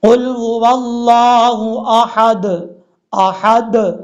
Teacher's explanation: یہ جو لاسٹ پہ د کی آواز آ رہی ہے، یہ دال میں قلقلہ آ رہا ہے